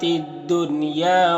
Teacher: یہاں پر الف لام حروف شمسی دال کے شروع میں ہے تو الف لام دونوں کو نہیں پڑھیں گے۔ اور دنیا کے نون میں اظہار مطلق ہوتا ہے تو نون کو ظاہر کر کے جلد پڑھیں گے